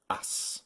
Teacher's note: ignore the vowels altogether and pay attention to the consonants instead if you want to make the A and ass short just go to the consonants early and stay on them a bit longer